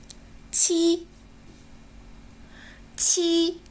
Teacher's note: 然后再将舌面稍稍离开，与硬腭形成一条窄缝，让气流挤出来。鸡。再试一遍，鸡。小鸡小鸡，叽叽叽。接下来我们看一看第2个字母，七。快看这个气球的形状，是不是就是七的形状啊？像个9字777，7个气球777。在发七这个音的时候呢， 它的发音方法和鸡大体是相同的，只是送出的气流较强。 来，我们试一试，七。七个气球777。下边我们来看第3个声母，它念西。西。刀切西瓜，西西西，一个大叉，西西西。对，西就像一个大叉子一样，对不对？好了，那在发西这个音的时候呢，我们体会一下，舌面前部抬起，靠近硬腭，形成一条窄缝，让气流从中摩擦而出。来体会读一读，西。西。一个西瓜，西西西。这就是我们今天学